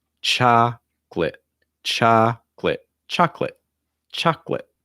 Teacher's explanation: the second syllable is going to have almost like a short i sound